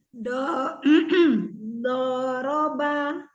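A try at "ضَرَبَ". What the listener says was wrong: Jadi huruf yang terakhir itu apa ya? Jangan anggap itu terakhir jadi ada sisa terseret ya. Jadi mantapkan, habiskan gitu ya. Jadi habiskan di sebelumnya itu jadi tinggal pengucapan aja ba. Anggap saja itu huruf di awal ya. Boroba.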